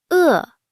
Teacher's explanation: È is fourth tone, sharp falling